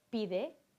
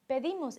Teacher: The stem vowels are different. I in pide and e in pedimos.